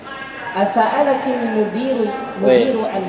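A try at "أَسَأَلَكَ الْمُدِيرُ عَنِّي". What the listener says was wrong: Sambung, bukan dikasroh, sambung.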